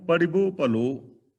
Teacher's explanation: ਕਬੀਰ, ਮੈਂ ਜਾਣਿਓ ਪੜਿਬੋ ਭਲੋ, ਪੜਬੋ ਨਹੀਂ ਬੋਲਾਂਗੇ, ਰਾੜੇ ਨਾਲ ਥੋੜੀ ਜਿਹੀ ਸਿਹਾਰੀ ਹੈ, ਸਿਹਾਰੀ ਦੀ ਆਵਾਜ਼ ਵੀ ਆਏਗੀ, ਔਰ ਰਾੜੇ ਦੇ ਥੱਲੇ ਥੋੜੀ ਜਿਹੀ ਹਾਹੇ ਦੀ ਆਵਾਜ਼ ਆਏਗੀ, ਜਿਵੇਂ ਅਸੀਂ ਪੜ ਬੋਲਨੇ ਆ, ਪੜਨਾ।